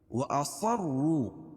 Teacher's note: صاد کو موٹا پڑھیں گے کیونکہ حروف مستعلیہ میں سے ہے